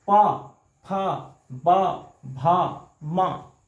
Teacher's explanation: इसका उच्चारण स्थान होंठ के टकराने से, होंठ है, इसको ओष्ठ कहते हैं संस्कृत में, तो इसलिए इसका नाम पड़ गया ओष्ठय, ओष्ठय व्यंजन।